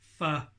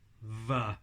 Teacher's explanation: And again, like the p and the b, one of those sounds uses just breath, and one of the sounds uses the vocal cords as well. So f is just air passing between your lips, v is the air passing between your lips and sound from your vocal cords as well.